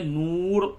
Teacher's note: را کو پڑھ کر کے پڑھیں گے کیونکہ را ساکن ہے، ما قبل اس کے پیش ہے